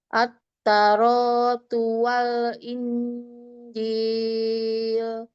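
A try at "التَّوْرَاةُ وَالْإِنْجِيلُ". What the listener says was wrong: Itu bukan turu. Itu fathah. Taknya tasdid. At, langsung ditasdid.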